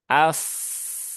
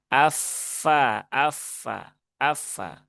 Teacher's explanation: Fa, ingat tadi fa sudah ada di sini ya di ayat sebelumnya, jangan sampai menjadi pa tetapi dia tetap fa dari sini ya. Dua gigi seri atas, ya ini bertemu dengan bibir bawah.